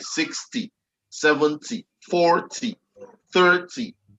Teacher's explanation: the stress is on the first syllable, which is the word that does not have the TY. So the 6 in the 60 is where we have the stress.